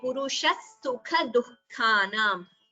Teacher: Both the khas are mahaprana and have to be chanted clearly.